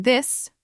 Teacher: The voiceless one like in think where you just blow air out with your tongue between your teeth and the voiced one like in this where you add a little vibration with your vocal cords